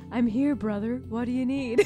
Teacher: I love your counselor voice. It's so gentle. So breathy and gentle.